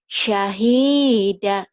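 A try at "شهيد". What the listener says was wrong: syahidu. Mana syahidah ada panjang. Syahidu.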